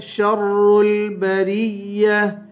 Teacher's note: ہم شر البریہ، شین کو را سے ملا کر را کو سختی کے ساتھ پڑھیں گے، را کو لام سے ملائیں گے